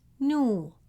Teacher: It is a short sound new. Then comes long vowel wow. Stress the sound and hold it for two beats. New. Then the final letter is written without a vowel mark.